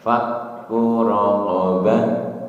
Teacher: Kunya pendek, tidak dibaca panjang.